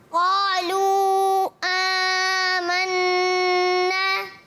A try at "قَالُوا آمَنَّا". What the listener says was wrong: قالو میں مد ہے, مد کو پورا ادا کریں گے.